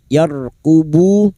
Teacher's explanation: Alaikum la yarqubu lam alif dua harakat kita panjangkan mad thabi'i. La yarqubu ra sukun yang didahului fathah dibaca tafkim. Yarqubu diu sukun dua harakat mad thabi'i.